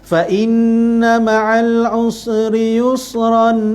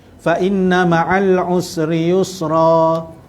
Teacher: Ketika berhentikan bacaan. Kalau kita sambung bunyi ron. Kalau kita berhenti jadi ra saja. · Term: ma'iwat